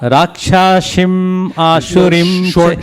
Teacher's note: Now, notice was doing sha and sa interchangeably.